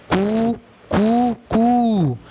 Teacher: इनमें पहला ह्रस्व है, मुर्गे का जो प्रारंभिक नाद होता है, रव होता है, वो ह्रस्व है। दूसरा दीर्घ, तीसरा प्लुत है।